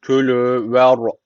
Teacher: ra harfi cezim öncesindeki harf üstten bağlandığı için ra harfi burada kalın okunması gerekiyor